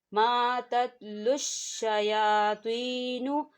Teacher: یا ساکن ہے، یا ساکن سے پہلے زیر ہے تو یہاں پر یا مدہ ہوگا